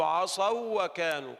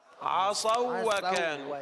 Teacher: أما عصوا فهذه واو لين فتدغم